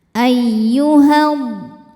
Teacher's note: Cara bacanya panjang dua harakat. Tapi jika diteruskan madnya gugur ya, h-nya dibaca pendek. Ada proses namanya taklus bilhafi.